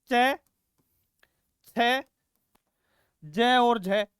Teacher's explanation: मैंने च बोलने से पहले अपने मुंह का आकार बना लिया यानी मेरी जीभ है वो तालू से भिड़ गई अब बेटा जब तक मैं उसको अलग नहीं करूंगा जीभ को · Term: स्पर्श संघर्षी